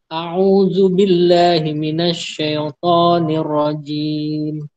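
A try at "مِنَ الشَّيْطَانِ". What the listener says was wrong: Nah, untuk syaiton, ya-nya jangan mantul. Jangan minasyaiton, syai'. Nah, itu juga termasuk tambahan untuk sifat lin kayak syai atau fir'aun, au itu jangan mantul. Jadi jangan syai', tapi syai. Ditahan. Syai, minasyaiton. Minasyaiton. Jangan minasyai'. Syai'. Ya, itu jadi qalqalah. Ya, jadi minasyaiton.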